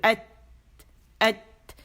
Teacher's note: پیچھے سے voice box سے جو ہوا آ رہی وہ تا کے مخرج پہ جب پہنچتی ہے، تو مخرج پہ جب ہم اس کے گئے ہیں تا کہ ایت، آواز سختی سے بند ہو گئی قوت کے ساتھ